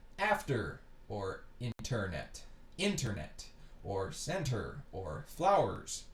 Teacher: you notice how the stress of the word of these multi-syllable words is not on the ER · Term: schwa with the tail